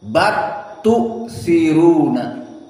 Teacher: Idgham lam to the ta.